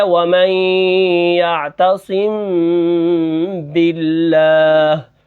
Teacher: وہ یہ ہے کہ میم کو جب ادا کریں گے تو نرمی کے ساتھ ہونٹوں کو ملانا ہے، پھر ہم نے اس کے بعد غنہ کرنا ہے، غنہ کے بعد پھر سختی کے ساتھ ہم نے با کو ادا کرنا ہے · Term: اخفاء شفوی, اخفاء